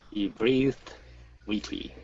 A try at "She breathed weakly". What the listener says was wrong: Good, good. Nice job.